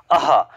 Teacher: विसर्ग ध्वनि का जो उच्चारण होता है हा व्यंजन की तरह होता है · विसर्ग अघोष एवं महाप्राण ध्वनि होती है।